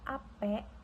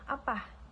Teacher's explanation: itu biasanya diasosiasikan untuk penutur berlatar belakang Melayu. Nah, jadi dari bunyi e dan ah pada kata apa itu menunjukkan itu menunjukkan identitas sosial si penutur itu. Baik dari segi etnis, kemudian asal daerah atau latar budaya. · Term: variasi bunyi